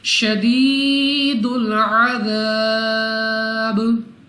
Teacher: next हमारे पास अलिफ से पहले ज़बर अलिफ मद्दा 2 सेकंड तक लंबा करना है और वक्फ में बा को साकिन कर देंगे और कलकला करके अदा करेंगे